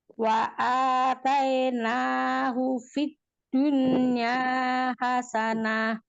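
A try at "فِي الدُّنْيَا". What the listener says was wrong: Itu nggak di titik makhraj dal itu Mi. Itu Mi terlalu kemundur. ke depan lagi. Jadi nggak ke belakang ya. Kalau ke belakang jadi nggak kedengar si huruf dalnya, cuma do-nya doang.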